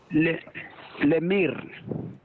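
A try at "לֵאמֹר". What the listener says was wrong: that's a cholam above the mem, so it makes the O. Yes, lemor.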